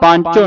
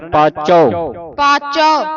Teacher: ਪਾਂਚੋ ਨਹੀਂ ਕਹਿਣਾ ਇਹਨੂੰ ਇਵ ਬਿੰਦੀ ਤੋਂ ਰਹਿਤ ਉਚਾਰਨ ਕਰਨਾ